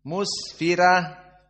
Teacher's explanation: Maka sin dalam keadaan sukun dinamakan dengan sifat ar-rakhawah. Jaroyan as-saut. Ada masih suara. Mus berdesis.